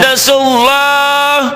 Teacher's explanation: Lafaz Allahnya dibaca tebal tafhim karena Sebelum lafaz Allah ada baris domah. sebelum lafaz Allah baris di atas domah.